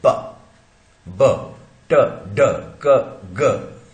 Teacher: Air stream पूरा बंद कर देते हैं बाहर निकलने के पहले और एकदम से खोल देते हैं, जैसा लगता है जैसे कोई फटाका ब्लास्ट हुआ, विस्फोटक, स्फोटक साउंड, विस्फोट है ना। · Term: प्लोजिव्स